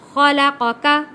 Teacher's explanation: قاف موٹا اور کاف پتلا پڑھا جائے گا۔